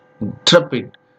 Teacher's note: But English people say it as intrepid. So almost the first syllable is swallowed, and we have to listen it very carefully.